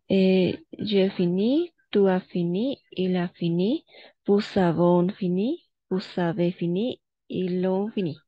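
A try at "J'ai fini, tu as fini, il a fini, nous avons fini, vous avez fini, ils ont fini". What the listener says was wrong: Bravo, c'est ça. C'est ça. Bravo. Excellent au niveau de la prononciation.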